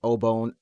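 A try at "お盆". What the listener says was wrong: Obon. The way that you pronounce it made it sound like Obone or something.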